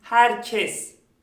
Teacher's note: birinci e açık ikinci e ise kapalıdır